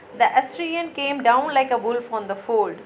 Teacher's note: the first 2 syllables will be unaccented and the third syllable only will be accented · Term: anapes meter